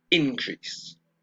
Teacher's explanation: in the noun the form is the same but the pronunciation is different the stress is on the first syllable